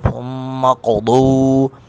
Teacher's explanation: قوف ساکن پر قلقلہ کریں گے ، ثم قضو، ضاد کو پر کر کے بھی پڑھیں گے